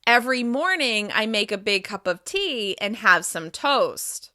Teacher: Listen to the rise after each idea, and the fall at the end. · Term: intonation